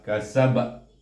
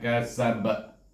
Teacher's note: Kita sukunkan huruf ba ini, maka kita kena baca dengan kakalah kubra